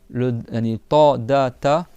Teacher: Parce que ces 3 lettres ont le même point de sortie. C'est le bout de la langue qui vient taper derrière les dents du haut.